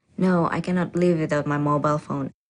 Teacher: the answer is definite and this certainty is expressed with a flat or level tone.